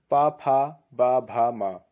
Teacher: हिंदी के वर्णमाला में जो पा वर्ग है वह ओट से बोला जाता है